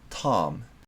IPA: tɑːm